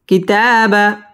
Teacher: স্পষ্ট করে পড়তে হবে মান পেশের বাম পাশে জজম মদের হরফ এটা মদ্দে তবাই এক আলিফ টেনে পড়তে হবে